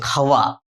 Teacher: এখানে ব এর উচ্চারণটা ওয়া হয়েছে। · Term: অন্তস্থ ব